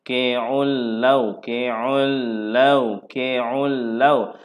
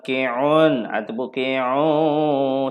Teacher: Faqi'ul launuha. Tiada dengun tiada dengun di sini. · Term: idgham bila gunnah